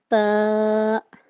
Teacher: دیکھیں جب ہم تا ادا کرتے ہیں تو ہماری جو زبان کی نوک ہے وہ اوپر والے جو سامنے کے 2 دانت ہیں انہیں عربک میں ثنایا علیہ بولتے ہیں۔ تو ہماری زبان کی نوک اوپر سامنے کے 2 دانتوں کی جڑ سے لگتی ہے